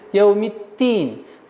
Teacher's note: Нужно немножко давить, так как при отсутствии давления на местонахождение буквы даль получится т.